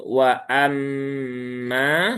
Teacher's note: wawunya tipis, hamzahnya harus jelas ya. Jangan diringankan, jangan wa, tetapi wa amma.